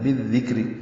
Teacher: کاف ساکن سے ملائیں گے، کاف بھی باریک ہے، کاف ساکن پہ ہمزہ ہے. را بھی باریک ہے کیونکہ اس کے نیچے زیر ہے